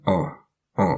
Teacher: the a with the hook at the bottom that's an ah it comes out through your nose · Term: the nasal sound